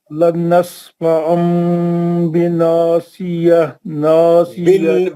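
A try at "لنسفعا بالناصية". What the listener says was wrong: बिन, एक मिनट, लनस्फअम बिन्नासिया। आप दूसरा गुन्ना छोड़ दे रहे ना नासिया का, नून मुशद्दद नहीं दिख रहा आपको, पढ़िए लनस्फअम से।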